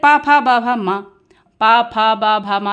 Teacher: दोनों आप होठों को मिला रहे हैं तभी बोल पा रहे हैं, तो ये इनका उच्चारण स्थान क्या होता है, होठ।